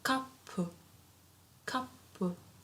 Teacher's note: So P becomes double because we have a tsu in between. Because we have tsu before.